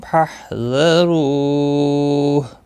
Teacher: واو مدہ ہے اور ہا ساکن پڑھا جائے گا، وقف کی صورت میں، ملانے کی صورت میں اپنی حرکت کے ساتھ پڑھا جائے گا۔